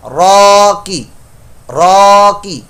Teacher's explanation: صرف کاف کے نیچے حرکت ہے، اس کو لمبا نہیں کرنا